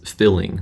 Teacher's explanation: the way that she said the word feeling, she said is filling. So she has sort of a prelateral merger there too.